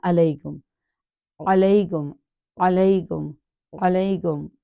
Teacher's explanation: حرف عین کو مڈل آف تھروٹ سے نکالنا، ہلکی لیٹر ہے، حمزہ کے مخرج سے نہیں کرنا